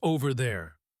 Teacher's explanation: In natural speech, Over there often sounds like over there, with the R sound connecting the two words. This is the linking OR.